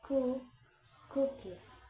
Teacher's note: K is voiceless velar plosive as in ku, cookies.